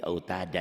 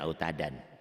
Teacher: Mad'i wad, dua fathah dibaca satu jika berhenti, jika dihentikan.